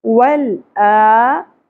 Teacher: حمزہ کو کھڑی زبر کی وجہ سے ایک الف کے برابر کھینچیں گے